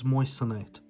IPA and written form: ˈmɔɪsəˌnaɪt (Moissanite)